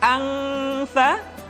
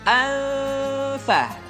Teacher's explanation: nun mati tanwin ketika digunakan posisi makhraj sudah berada pada huruf fa. Contoh, anfa. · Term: ikhfa